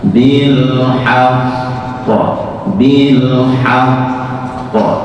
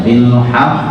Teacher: Pengecualian yang kedua masuk pengecualian ya, sehingga tidak boleh dibaca bil haqqi terus menjenengan naikkan suara bil haqqo, bil haqqo, tidak perlu dinaikkan tapi cukup hanya ditekan dan suara datar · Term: nabr